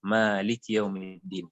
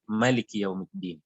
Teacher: dalam qiraah ini ayat keempat itu dibacanya panjang, Maliki Yaumiddin. Jadi kalau qiraat itu bacanya dengan pendek, Maliki Yaumiddin.